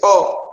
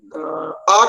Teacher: तो इसको समझ लीजिए, मात्रा जब आप ह्रस्व कहते हैं तो एक मात्रिक होगा, जब दीर्घ कहते हैं तो द्विमात्रिक होगा, ठीक। जैसे अ एक मात्रिक, उसके बाद ये आ कहेंगे तो दो मात्रा वाला होगा। अ जो होगा उसको आप लघु कहेंगे, आ जो होगा उसको गुरु में मानेंगे।